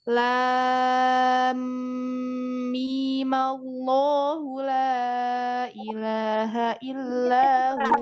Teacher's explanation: Jadi mi-nya dibacanya dua harokat.